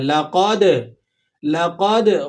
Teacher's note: لام کو کھینچیں گے نہیں، لَقَدْ اس طرح نہیں پڑھیں گے، اور دال پہ قلقلہ آپ نے کرنا ہے